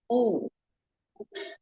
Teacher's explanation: Dhamma, monyongkan bibirnya dengan sempurna, kemudian tekan vokal U.